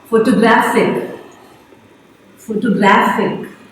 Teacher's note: So the stress is on the second last syllable. Last but one.